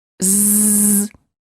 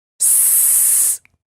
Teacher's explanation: The tongue and lip positions of the z and the s are identical. The only difference between them is vibration or no vibration.